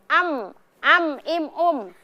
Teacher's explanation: Bertemunya antara kedua bibir dalam keadaan tertutup.